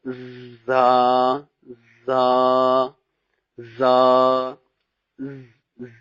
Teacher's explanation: اوپر اور نیچے والے سامنے کے جو 2 دانت ہیں اوپر اور نیچے والے، ان دونوں کا کنارہ ہوگا اور زبان ان کے اندر ہوگی